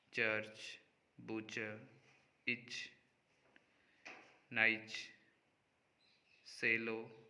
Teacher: the blade of the tongue, initially moves up in the position of a stop, but then moves through a fricative or spirant position rather than remaining in the stop position.